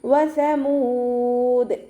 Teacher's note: ഉച്ചരിക്കുമ്പോൾ ചുണ്ടുകൾ ഒന്ന് സർക്കിൾ ചെയ്തു കൊടുക്കുക സ ലൈറ്റ് ആക്കിയിട്ട് ഉച്ചരിക്കാൻ ശ്രദ്ധിക്കുക നമ്മുടെ പല്ലിന്റെ ഇടയിലൂടെ കുറച്ച് എയർ പുറത്തോട്ട് പോണ സൗണ്ടിൽ വേണം ഉച്ചരിക്കാൻ